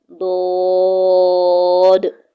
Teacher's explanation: ज़बान की करवट और ऊपर के दाढ़ू की जड़ से अदा होता है। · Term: हरफ हाफिया